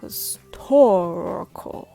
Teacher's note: when the stress falls on the second syllable tor all the other syllables become weak